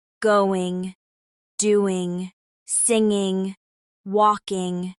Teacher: G is usually not pronounced as a hard G sound. It's a nasal ending.